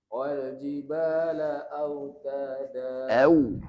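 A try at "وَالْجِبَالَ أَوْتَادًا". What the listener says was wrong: Au, masukkan lagi. Wal jibala autada.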